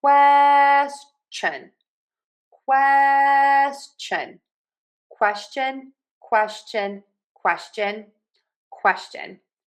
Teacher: So we're going to start with quest. And for quest, you want to say that k w. Stress it. · But for question, we actually say a ch sound, not the sh.